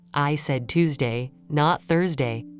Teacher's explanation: the contrasted words receive strong energy. Even if the surrounding phrase is weak, the decision-critical information stands out. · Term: contrastive stress